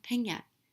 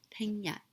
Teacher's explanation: and tomorrow 聽日 is high to low